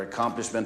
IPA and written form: ə|kɑːmplɪʃmənt (accomplishment)